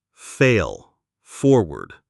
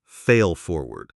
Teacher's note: The L at the end of fail can be tricky. It is a dark L. Your tongue stays down a bit. Then we go straight into the F of forward.